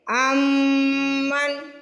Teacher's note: غنہ مطلب ناک میں آواز لے کے جانا اور تھوڑی دیر لگانا۔